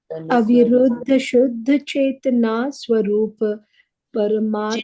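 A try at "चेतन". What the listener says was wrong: Chetana. There's no line at the end.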